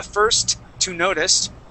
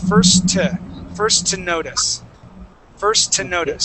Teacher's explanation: it runs right into each other first to first to notice first to notice so there's only one t there so try that uh first to notice yeah first to notice